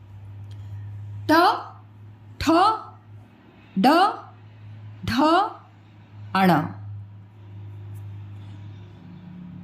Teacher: आपकी जो जीभ है वह थोड़ा सा मुड़ गई है मतलब की ऊपर डायरेक्ट टच नहीं कर रही थोड़ा कर्व ले रही है · ट ठ देखो कर्व ली ना, आगे वाली जो जीभ है वो पीछे थोड़ा सा कर्व ली, मतलब मुड़ी। ट ठ, अभी भी वो तालु को टच कर रही है लेकिन पूरा कंप्लीट टच नहीं कर रही है, मुड़ के टच कर रही है। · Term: मुर्धा स्थान, मूर्धा स्थान